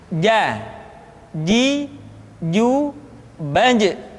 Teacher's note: Padahal kalau kita melihat sifat yang dimiliki huruf ja, dia tidak boleh mengalir nafas karena sifatnya al-jahr, lawan dari al-hamas.